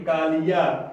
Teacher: या पे जो है ज्यादा बल पड़ रहा है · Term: स्वराघात